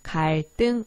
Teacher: 리을 받침 뒤에 연결되는 얘네들은 된 소리로 발음한다